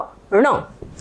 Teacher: ण बोलते समय पर जवान ऊपर को टकराएंगे थोड़ा सा नाक लगेगा नासिका · आप बोल के देखिए, जबान बराबर ऊपर टकरा रही है, ढ, ण। और ण बोलते समय पर जबान ऊपर को टकराएंगे, थोड़ा सा नाक लगेगा, नासिका। तो ये जो ण है इसका उच्चारण स्थान मूर्धा है और साथ में नासिका, जो मूर्धा के साथ में नासिका है।